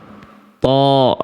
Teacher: Ujung lidah berjumpa dengan pangkal gigi atas. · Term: huruf th